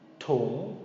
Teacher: But the tung is going to be a short rising tone. So the first part, ta, it's more drawn out, ta.